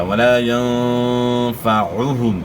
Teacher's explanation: الف مد ہے یہاں، اور نون ساکن میں آپ نے غنہ اخفاء کے ساتھ کرنا ہے. نون ساکن کے بعد اخفاء کے 15 حروف میں سے فا ہے، تو یہاں غنہ اخفاء کے ساتھ ہوگا